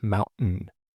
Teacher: you get a glottal stop followed by a syllabic nasal